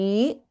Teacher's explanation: we have अल्पप्राण the एज well as महाप्राण ध here